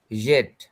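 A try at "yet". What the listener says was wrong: আচ্ছা, জেট না, এটা এটা ইয়েট। জের মতো উচ্চারণ নিয়ে আসবেন না।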